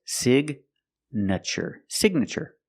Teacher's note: With signature, the GN is in the middle. And we pronounce the G like a hard G sound. So it's signature.